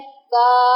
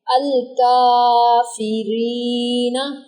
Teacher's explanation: का यानी कि काफ जो है वो अलिफ मद्दा में आएगा। इसको लंबा करेंगे।